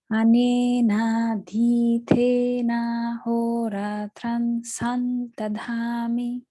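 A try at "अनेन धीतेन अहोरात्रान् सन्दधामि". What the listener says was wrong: short. That tran, it's long also. Anena dhitena horatran sandadhami.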